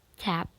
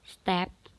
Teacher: because t followed by vowels t is aspirated example t become tap step is not aspirated and that is